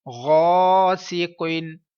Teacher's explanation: الف سے پہلے پر حرف ہے، الف کو پر پڑھیے، اور الف سے پہلے زبر ہے، الف مدہ ہے اس لیے 1 سیکنڈ لمبا کریے۔